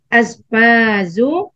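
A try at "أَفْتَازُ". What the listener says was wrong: Aftazu. Huruf fa dulu. Aftazu.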